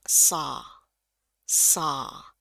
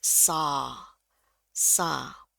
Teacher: W-nya dibuang, terus A-nya tebal ya, A. Jadi saw, saw.